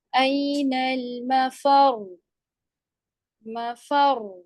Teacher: یعنی کہ اگر یہاں پہ آپ را کو ساکن کریں گے تو مشدد کے اندر دوسرا والا جو را تھا وہ پیش والا تھا، وقف کی صورت میں وہ بھی ساکن ہو گیا، ٹھیک ہے. اب دونوں را کو واضح کرنے کے لیے آپ یہاں پہ نبر کرتے ہیں